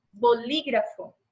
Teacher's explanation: E aí nós temos, né, a sílaba tônica em antepenúltimo lugar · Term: Esdrúxula